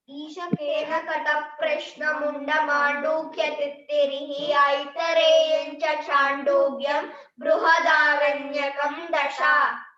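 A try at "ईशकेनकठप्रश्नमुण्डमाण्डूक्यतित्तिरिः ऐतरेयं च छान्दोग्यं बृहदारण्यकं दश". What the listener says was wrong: Very good, excellent, నేర్చుకున్నారు మీరు.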